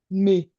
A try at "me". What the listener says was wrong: Exactly.